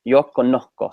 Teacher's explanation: if there's an S at the end of a syllable at the end of a syllable they don't pronounce it